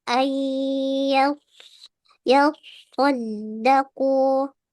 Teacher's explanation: Sifat sofirnya harus ada, tetapi tidak boleh monyong bibirnya.